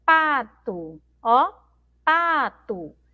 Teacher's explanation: a palavra pato, ela termina com a letra O, tá bom? Mas pronunciamos com som de U.